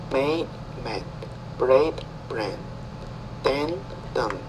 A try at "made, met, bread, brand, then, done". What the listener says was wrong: Okay, the same problem. So the longer vowel sounds are harder for you.